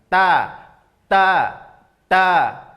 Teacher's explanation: Ujung lidah tempelkan ke tempat pertama tumbuh gigi seri atas. · ujung lidah terasa bertemu dengan dagingnya, juga terasa bertemu dengan gigi-gigi seri atas di dalam. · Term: huruf ta